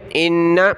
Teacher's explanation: حمزہ کو نون کے ساتھ ملایا، غنہ کریں گے